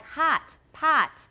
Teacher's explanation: spelling h-o-t in american is the ah sound